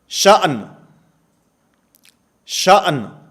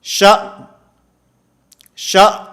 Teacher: بسا اوقات ہم پڑھتے ہیں تو پڑھتے ہوئے شا شا، اب حمزہ متحرک کی آواز تو حمزہ ساکن کی آواز تو آ رہی ہے، نون کی آواز ختم ہو گئی ہے